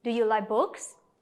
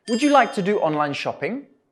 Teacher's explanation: remember to raise your voice at the end of these questions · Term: rising intonation